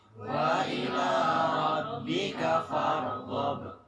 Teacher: roknya farghab, itu roknya tebal ya